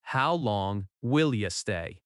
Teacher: In natural speech, will you often links and sounds like, Will ya? · The stress falls on long and stay.